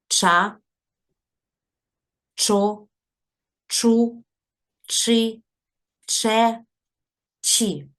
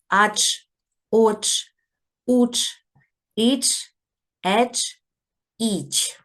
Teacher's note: буква ч ч позначає твердий приголосний звук ч і коли ми будемо зараз читати склади то ми будемо вимовляти твердо цей приголосний